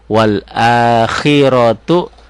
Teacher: ronya tebel, tafhim, tu-nya kosar